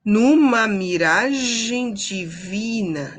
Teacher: divina sílaba tônica é o vi